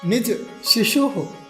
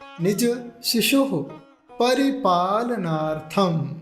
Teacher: विसर्ग है, आधा ह जैसा उच्चारण निकलेगा